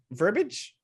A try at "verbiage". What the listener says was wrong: Verbiage. There's an I in verbiage.